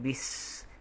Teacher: Huruf sin yang sukun itu bunyinya bis. Okey, kedengaran sifat suara ataupun sifat huruf sin, okey, berangin, dan keadaan berangin ini tidak boleh diputuskan. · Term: sifat al-hamsu